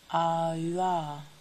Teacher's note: Voiced labial palatal approximant.